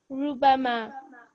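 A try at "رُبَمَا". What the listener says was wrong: Yeah, good.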